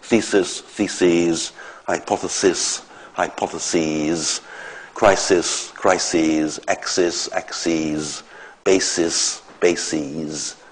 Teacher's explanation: The singular ends in [sis], unstressed [sis], the plural ends in [si:z]